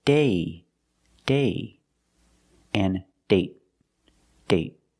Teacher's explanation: with date, we see the vowel is shorter because you have a stop d at the end.